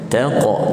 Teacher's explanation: ta nipis, kemudian masuk ke dalam qaf, qalqalah sughra sederhana, taqa. Okey, gini, jangan ada yang taqhar, taqa tu tebal, nipiskan, taqhar.